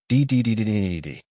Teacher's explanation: Feel your tongue bouncing off the ridge.